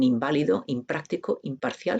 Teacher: Considera el prefijo in, que se manifiesta como con una bilabial, una nasal bilabial, en inválido, impráctico, imparcial, se pronuncia como im.